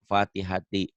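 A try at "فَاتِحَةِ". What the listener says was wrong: Pendek ini.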